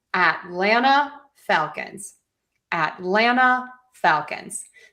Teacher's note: So we have that low high low high low pattern.